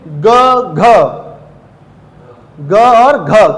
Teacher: क, ख बोल रहा हूं, प्रेशर ज्यादा किस में लगा? क में कि ख में? ख में। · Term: महाप्राण